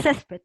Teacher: La fuerza de voz está aquí, en ces, porque tú dices césped, no dices césped.